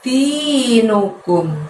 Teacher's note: Di-nya panjangnya 2, nu-nya pendek, kumnya pendek.